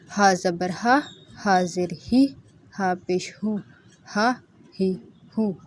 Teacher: ہا جو ہے یہ سینے سے اس کی آواز نکلتی ہے، تقریباً سینے سے۔